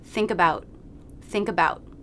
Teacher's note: for the schwa we want no jaw drop we want to make it as quickly as possible